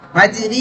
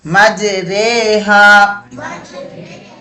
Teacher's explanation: பத்ஹாவிற்கும் கஸ்ரா இடையே சாயத்து இமாலா என்ற உச்சரிப்பின் அடிப்படையில் ஓதக்கூடிய இடம் இருக்கிறது அப்போது இந்த ராவை மென்மையாக ஓத வேண்டும் குர்ஆன்ல ஒரே ஒரு இடம் மட்டும்தான்